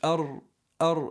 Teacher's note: It's a heavy ra with a shadda.